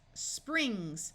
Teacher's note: Notice the S here is part of a consonant blend, and so it has the unvoiced sound.